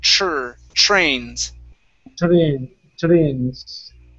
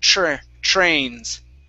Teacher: So with that TR, pronounce a CHR sound.